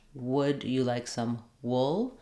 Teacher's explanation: you'll hear that the vowel sounds slightly different as it's sliding into that l sound